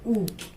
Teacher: होंठ को हमने गोल किया तो ऊ निकली आवाज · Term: ओष्ठ